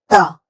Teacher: त में कोई हवा नहीं निकलती